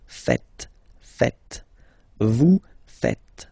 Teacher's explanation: final S here is not pronounced, and then this E is not pronounced either